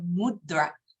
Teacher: And I'm not rolling my tongue because I can't. You're just hearing that tongue moving quickly off the back of my teeth. · But it is very quickly the tongue, it's a dental in the D and the R, the tongue coming to the roof of your mouth